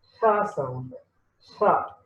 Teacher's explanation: it is voiceless sound, and the place is dental, and manner is fricative because the air flows from narrow gap actually.